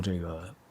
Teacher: nèi ge instead of nà ge, and zhèi ge instead of zhè ge. That's simply a common northern pronunciation in China